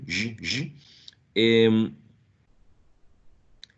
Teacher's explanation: So, in the case of palatal fricatives, sh and j, as in show and television or vision, j, j, the friction is created by the tongue being pressed against the area in between the alveolar ridge and the palate. So it's past the alveolar ridge.